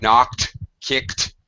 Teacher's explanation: The KT sound. There's like a double clicking sound.